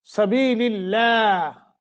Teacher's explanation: لفظ اللہ کو باریک پڑھیں گے